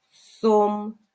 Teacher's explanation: перший звук с твердий це приголосний звук і ми позначаємо однією рисочкою наступний звук о Це голосний звук